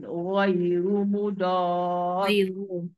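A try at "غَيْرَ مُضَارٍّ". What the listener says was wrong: Cukup ghaira bukan ghairu. Mudar adalah mad lazim kalimi musaqqal. Dia kena baca enam.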